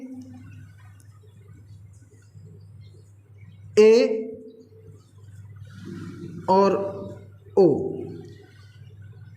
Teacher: ए और ओ का जब हम उच्चारण करते हैं तो जिह्वा संवृत की अपेक्षा थोड़ी नीचाई पर रहती हैं, थोड़ी नीचे रहती हैं। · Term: अर्धसंवृत स्वर